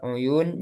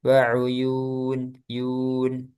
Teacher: uyun jangan masuk hidung ya. Jangan waun yun.